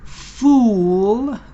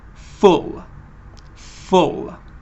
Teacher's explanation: the first one is longer it is a long ooh sound the second one is a short uh sound · So, but the first one is longer. It is a long oo sound. The second one is a short oo sound. It is exactly the same the way you do it, but you just make it shorter and it finishes early.